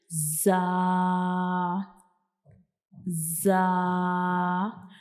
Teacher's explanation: हम जा को अदा करने के लिए ऊपर और नीचे वाले दोनों दांत जो होते हैं इनको आपस में जोड़ते हैं। और दूसरा जो हमारी जुबान की जो नोक होती है ये हमारे जो ऊपर वाले और नीचे वाले दांत होते हैं इनकी अंदर वाली साइड पे जाके थोड़ा सा टच करती है।